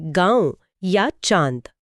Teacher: चांद बोलते समय मुंह खुला होता है और हवा नाक से भी निकलती है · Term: अनुनासिक